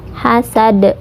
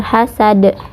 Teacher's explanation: qalqalah kubro atau qalqalah besar. Huruf qalqalah di sini yaitu dal. Hasad ya, pantulannya besar, hasad.